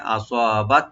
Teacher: এখানে আমরা একটু হামস করবো, এখানে আসাবাত যেন একটা হালকা হাওয়া যাবে